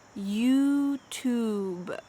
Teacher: the vowel is the same here you youtube notice how my lips don't really change